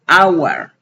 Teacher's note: en la palabra hour yo no pronuncio hour con J, sino con la H muda, hour. Aquí no estoy pronunciando como una J, entonces como pronuncio una vocal, le antepongo consonante, an hour, ¿sí?